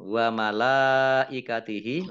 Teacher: Kemudian lam fathah berdiri wa malaikatihi lam fathah berdiri mat tabi'i. Tetapi karena bertemu dengan huruf hamzah dalam satu kata maka menjadi mat wajib muttasil. Dibaca panjang 5 harokat.